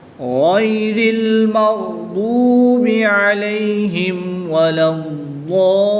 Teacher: لام کو ضاد کے ساتھ ملائیں گے، ضاد کے اوپر تشدید ہے، اس کو پر یعنی موٹا پڑھیں گے، تشدید کو خوب ظاہر کریں گے، اور حروف مدہ کے بعد کہ الف مدہ کے بعد سکون اصلی آ گیا تو یہاں پر مد لازم ہوگی، اس کو 3، 4 یا 5 الف تک کھینچ کر پڑھیں گے۔ وقف کی صورت میں یہاں پر مد عارض ہوگی، یہاں پر 2، 2.5 یا 3 الف تک کھینچ کر پڑھیں گے۔